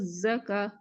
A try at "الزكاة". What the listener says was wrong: ஹா கடைசியில சுக்கூன் வச்சு நிப்பாட்டுறீங்க. அதுக்கு முன்னுக்கு வந்திக்கிற அடையாளம் ஃபத்தஹ் மத்தி. அப்ப நீட்டி நிப்பாட்டணும். அடுத்தது வயோ என்று வரக்கூடாது. இந்த இடத்துல அலிஃப்ல உச்சரிப்பு எடுக்கணும்.